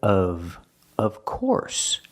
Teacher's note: the F sounds like a vvv sound like very